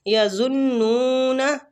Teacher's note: نون مشدد پہ غنہ بھی کریں گے اور نون کو کھینچیں گے بھی